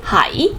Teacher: if you put the place first and then bin do at the end, the hai is actually hai, second tone